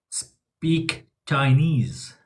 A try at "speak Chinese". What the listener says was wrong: Very good. See, the way you just said Chinese, that's perfect.